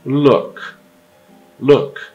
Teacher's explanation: um som curto arredondado com os lábios arredondados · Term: short you